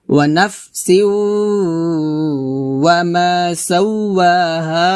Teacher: তারপর ওয়া নাফসিউ, এখানে ওয়া নাফে হবে না, হবে নাফ, বাতাস বের করবেন, নাফে বলবেন না। ওয়া নাফসিউ সিউ বলতে হবে, সিন গে ওয়াও কে ধরবে এবং গুণনা হবে, এটা হচ্ছে দেগামে বা গুণনা।